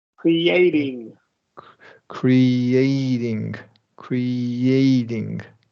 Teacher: You're going to say creating and emphasize the Y after this long E.